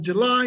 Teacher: We have July, the stressed one is the second.